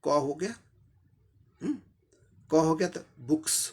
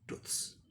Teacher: voiceless में apostrophe जब लगता है तो एपोस्ट्रोफी का उच्चारण स होता है, स साउंड होता है